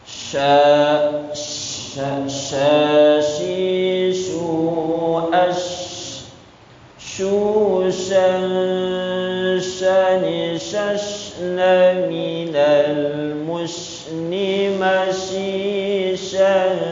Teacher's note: Yaitu menyentuh, menempelkan pertengahan lidah gitu kan, menyentuh langit atas. Jadi tengah lidah menyentuh langit atas gitu. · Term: huruf shi